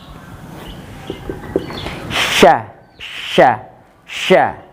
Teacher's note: Tengah lidah ditempelkan ke langit-langit atas. Sya. Tengah lidah ditempelkan ke langit-langit.